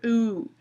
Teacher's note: we're lengthening the vocal fold, lengthening the vocal tract, and the pitch is a little lower.